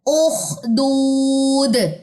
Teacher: दाल जज़म कलकला लेगा · दाल की जेर को ड्रॉप कर दें वक्फ की सूरत में और दाल पे आ जाएगा जज़म।